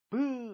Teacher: 입술이 다 있고 뒤에 풍선이 생겼어요. 그리고 발음을 하면 브 하면서 터지죠. 입술 소리, 파열음, 브가 있어요.